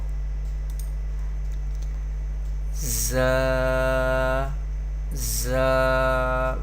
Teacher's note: When we pronounce this letter, it creates whistle sound.